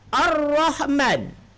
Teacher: Yang ada bunyi alif masuk kepada ra. Karena dia alif lam samsiah. Jadi masuk huruf setelah lam bersabdu.